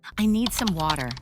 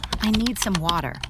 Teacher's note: In American English, the T sound often changes, especially when it's between two vowel sounds. Instead of a clear T, it sounds more like a soft D. This makes speech flow more smoothly. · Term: T sound changes